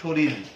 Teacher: ওই যে আমরা শরীরের জায়গায় যদি বলি শরীর, তাহলে কিন্তু একটি র এর পরিবর্তে একটি ল চলে আসলো উচ্চারণে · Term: ব্যঞ্জন ধ্বনি সম্পর্কিত পরিবর্তন